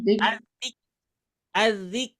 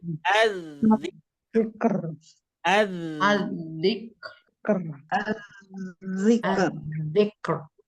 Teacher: R-nya kebaca. K kebaca, R juga kebaca. Jangan sampai az-zik. Az-zik. Nah, kurang sempurna karena ro-nya gak kebaca.